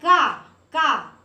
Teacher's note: तो का वर्ग का उच्चारण स्थान है कंठ